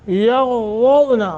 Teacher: غین ضاد دونوں موٹے کر کے